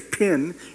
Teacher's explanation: when you say pin you'll feel a puff of air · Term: aspirated stops